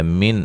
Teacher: نون ساکن کا اظہار ہے، غنہ نہیں کریں گے